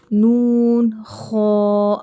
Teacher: اب خو یہاں حرف مستعلیہ ہے تو خو کو موٹا پڑھیں گے